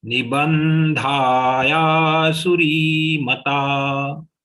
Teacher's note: The anuswar of ba will get converted into half na because the series anunasik is na. That's why there is a stress on ba.